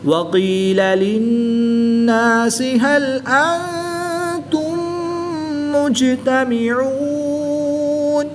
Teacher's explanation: نون ساکن کے بعد تا حروف اخفاء میں سے ہے تو یہاں پر اخفاء ہوگا، یعنی غنہ زمانی کر کے پڑھیں گے